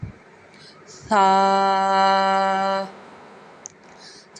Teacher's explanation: ثا نرمی سے ادا ہوگا، زبان کا سرا اوپر کے دانتوں کے اندرونی کنارے سے ادا ہوگا